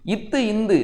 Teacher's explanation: நாவின் நுனி, பல்லின் அடி.